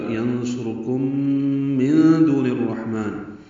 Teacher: ینصرکم میں نون ساکن کے بعد صاد آنے کی وجہ سے اخفا ہے، صاد را دونوں پر ہیں، کاف باریک ہے، میم ساکن کے بعد میم آنے کی وجہ سے ادغام ہے، غنہ ہوگا۔ ینصرکم من دون الرحمن، نون ساکن کے بعد دال آنے کی وجہ سے اخفا ہے، دو واو مدہ ہے، نون کو الرحمن کی را سے ملانا ہے، زیر کی وجہ سے نون کو را سے ملانا ہے، اور ادغام شمسی ہے۔